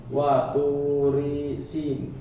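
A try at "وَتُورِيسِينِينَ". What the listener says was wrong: Bapak masih memotong wa turi. Dipotong. Sambung. Wa turisi.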